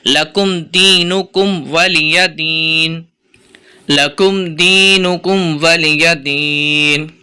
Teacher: یا ادھر بھی کھینچتے ہیں، دیکھیں یہاں پر کھینچیں گے نہیں، ولی دین حرکات کا قاعدہ لگ رہا ہے تینوں کے اوپر، واو لام یا کے اوپر، تو اس کو کھینچیں گے نہیں ، لکم دینکم ولی دین لکم دینکم ولی دین۔ امید کرتا